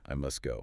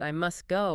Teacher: the final T on must almost always disappears.